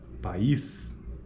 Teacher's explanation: país são sílabas diferentes portanto é apenas uma sequência de vogais durante a articulação de duas vogais em sequência como na palavra país cada vogal ocorre em uma sílaba distinta e cada vogal apresenta a qualidade vocálica específica específica neste caso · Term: hiato